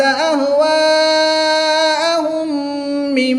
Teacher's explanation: میم ساکن کے بعد دوسری میم آ جائے تو ادغام شفوی ہوتا ہے، یہاں پر غنہ کر کے پڑھیں گے